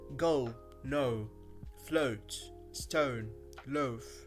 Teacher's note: This diphthong starts in the middle of the mouth, in the schwa position